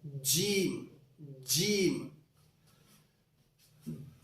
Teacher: जबान के दरमियान को तालू के दरमियान से मिलाना है यह थोड़ा मजबूती के साथ पढ़ा जाता है इसमें थोड़ी सी · جیم یعنی ہمیں نہ تو شروع کا حصہ جو دانت ہیں یا ہونٹ ہیں ان کو نہیں ملانا ہے بلکہ زبان کے درمیان کو تالو کے درمیان سے ملانا ہے. یہ تھوڑا مضبوطی کے ساتھ پڑھا جاتا ہے. اس میں تھوڑی سی شدت ہوتی ہے اس کے پڑھنے میں.